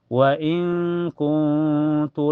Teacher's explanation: cara bacanya nun sukunya disamarkan ke ta dan ditahan sampai terasa ke hidung